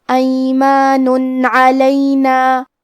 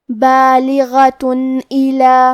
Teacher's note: تنوین ظاہر کریں گے اور اسے نون ساکن پڑھیں گے اور بغیر غنہ سے یہ حکم کو ادا کریں گے. ایمان علینا.